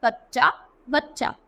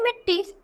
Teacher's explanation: तो ये सारे क्या थे द्वित यानी एक ही व्यंजन दो बार बोला जा रहा है